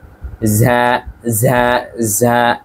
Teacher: একটু প্রেসার দিয়ে বলবো ভেতর থেকে একটি বাতাস বের হবে বাংলা মহাপ্রাণ ধ্বনির মত উচ্চারণ